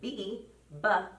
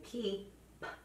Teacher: They are produced in exactly the same way except for B your voice is on and for P your voice is off